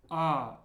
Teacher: It's a very open A sound.